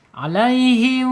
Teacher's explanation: Jadi dia terkatup bibirnya ya, asyafatain, tetapi masih mengeluarkan udara. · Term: ikhfa syafawi